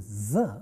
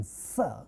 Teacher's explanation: It's also a fricative sound, and it's also alveolar fricative, but the distinction between z and s, both being fricative, is z is a voiced fricative, whereas s is a voiceless fricative.